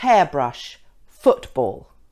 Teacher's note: the emphasis is usually on the first syllable or the first noun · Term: compound nouns